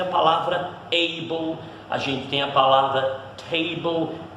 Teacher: Ainda com o L aqui, né? Mesmo sendo L, esse L ele meio que desaparece, ele não é uma consoante na palavra.